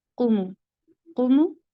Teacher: कौफ जो है ये पुर है मगर मीम बारीक अदा होता है